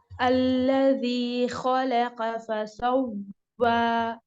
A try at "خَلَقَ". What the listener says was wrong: ٹھیک ہے، خا برابر ہے قاف، تھوڑا سا لائٹ ہے.